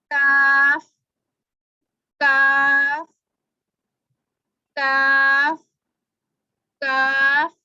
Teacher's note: ये इसकी डेफिनेशन ये है कि काफ के मखरज से थोड़ा सा मुंह की तरफ हटकर, जो मोटा काफ था वो यहाँ था, मोटा काफ यहाँ था और ये वाला काफ इधर है, मुंह की तरफ जरा हटकर इसका मखरज जो है वो अदा होता है। जुबान की जड़ और तालू का सख्त हिस्सा लगता है। जब मोटे वाले काफ की तरफ देखा था तो नरम हिस्सा लग रहा था और यहाँ पे अब देखा तो सख्त हिस्सा लग रहा है।